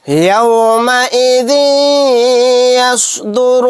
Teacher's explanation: بِأَنَّ رَبَّكَ أَوْحَى لَهَا، يَوْمَئِذٍ يَصْدُرُ النَّاسُ أَشْتَاتًا لِيُرَوْا أَعْمَالَهُمْ، ذال کے نیچے تنوین ہے، تنوین کے بعد یا آ گیا تو یہاں پر ادغام یرملون کا قاعدہ ہوگا، یعنی ادغام میں غنہ کریں گے، ذال کو یا میں ملاتے ہوئے غنہ کے ساتھ پڑھیں گے